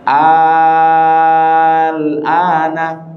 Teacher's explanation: Perhatikan a panjang mad kan. Setelah a panjang mad ada lam sukun. Inilah disebut mad lazim.